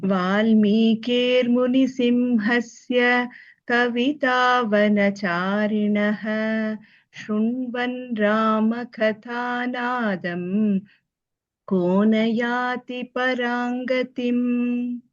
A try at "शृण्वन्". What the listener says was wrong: Here it's not Shrunvan, it's Shrinvan. Because when you say Shru, it's when you have a U ki matra, you say Shru. So there's a difference between Shri, Shru, and Shra. So here it is Shri.